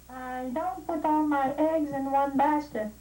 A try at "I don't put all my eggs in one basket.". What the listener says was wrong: Maintenant, prononce le T à la fin du mot don't.